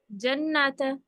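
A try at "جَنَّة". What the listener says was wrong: ता नहीं पढ़ते हैं, इसको हम हा की साउंड निकालते हैं, जन्ना।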